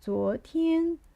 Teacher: zuo which is rising tone